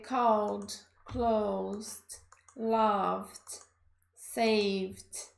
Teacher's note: para ter som de D, a gente vai falar que é um som vozeado